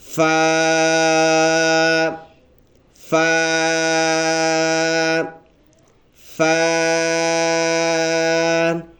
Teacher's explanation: فا یہ لفظ ادا ہوتا ہے اوپر کے جو دانت ہے اس کے سروں میں سے، اور نیچے کے ہونٹ کے بالکل درمیانی حصے سے ادا ہوتا ہے۔ ایک الف کے برابر اس کو ہم لمبا کر کے پڑھیں گے، ایسے بن جائے گا فا فا فا۔